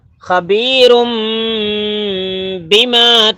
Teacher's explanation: تنوین کے بعد جو با ہے نا وہاں پہ گنا اکفا بھی کرنا، گنا اکفا. خبیرم بما.